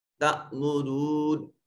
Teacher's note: تأمرون یہ حمزہ ساکن ہے، جھٹکے سے ادا ہوگا